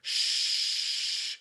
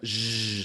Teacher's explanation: we're going to go now from an unvoiced fricative, which is the shh, into a zh